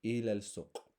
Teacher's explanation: I'm joining the alif maqsura to the lam, because we're in Arabic, when it's possible to join an alif to a lam, we always do. I don't need to pronounce this alif maqsura and then the other alif, so I just join them together.